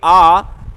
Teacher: जिव्या के पश्च भाग से उच्चारित होने वाला स्वर पश्च स्वर